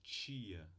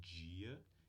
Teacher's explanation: Se a gente juntar essa oclusiva t com essa fricativa sh, a gente tem o som ch, que é uma africada surda, desvozeada. Se a gente junta essa oclusiva d com essa fricativa j, temos a africada j, em português, vozeada